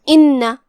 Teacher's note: نون پہ تشدید ہے لہذا ہم 2 حرف کے مقدار میں نون کو پڑھیں گے